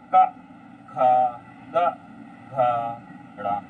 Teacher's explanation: का में कम वायु निकल रही, खा में ज्यादा निकल रही है, गा में कम निकल रही है, घा में ज्यादा निकल रही है और डा में कम निकल रही है